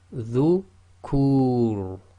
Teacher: the Ra acting as sakin at the end of a sentence or a stop, and the previous sound before it is the long vowel Dhamma wow, then again it's heavy